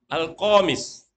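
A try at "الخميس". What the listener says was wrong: Nanti jadi kemeja nanti komis. Kalau antum baca komis jadi kemeja nanti. Kha. Khamis.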